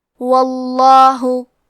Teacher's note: ہم لفظ الجلالہ مطلب کلمت اللہ کے لام کو موٹی آواز میں پڑھیں گے